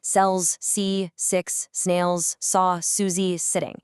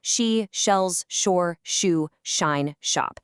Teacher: then we have the softer, broader sh sounds